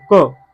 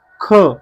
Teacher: आता अल्पप्राण आणि महाप्राण मध्ये बघा, अल्पप्राण मध्ये उच्चाराला वेळ कमी लागतो आणि महाप्राण मध्ये थोडस जास्त लागतो आणि त्याच्यात ह चा उच्चार होतो